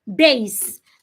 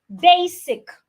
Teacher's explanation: the S does not change to a zed base like the word basic it's not basic the S remains